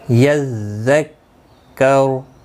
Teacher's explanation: را ساکن پڑھا جائے گا وقف کی صورت میں